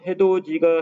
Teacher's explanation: 혀의 앞 위치가 비슷하기 때문에 지를 발음할 때는 혀를 거의 움직이지 않아도 돼요